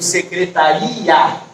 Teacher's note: aí eu não tenho ditongo aqui, eu tenho secretaria, eu passo a ter um hiato.